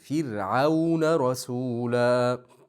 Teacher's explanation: fir'auna bu yerda ro harf oldi kasrali bo'lganligi uchun ingichka o'qilinadi